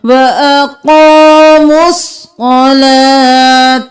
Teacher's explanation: کبائر الاثم والفواحش والذین یجتنبون کبائر الاثم والفواحش والذین استجابوا لربهم وأقاموا الصلاة میم پیش صوت بس واو الف الف لام نہیں پڑھیں گے, سارے خالی ہیں. میم کو صوت کے ساتھ ملائیں گے